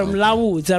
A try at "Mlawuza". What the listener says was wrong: It's actually Mlawuza. No, at the Home Affairs they made a mistake put the D in it.